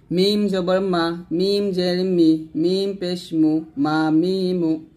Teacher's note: মিম দুই ঠোঁট মিল করে